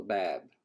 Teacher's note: So you may have learned that the word for door is bab with a B, with a long A and a B, and the vowel is very low in front